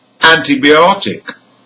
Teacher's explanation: The primary stress is on ot. That's second from the end because it ends in IC. The secondary stress is again on the prefix, and this time the prefix is an.